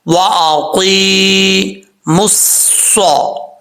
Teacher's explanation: صاد حروف مستعلیٰ میں سے ہے، پر پڑھا جائے گا